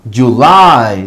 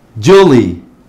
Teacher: la Y está al final, pero la sílaba con mayor fuerza está al final de la palabra. Por lo tanto, la Y en este caso suena como un long I sound